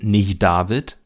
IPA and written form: nɪʝˈdaːvɪt (nicht David)